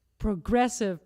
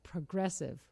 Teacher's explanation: stress the second syllable of progressive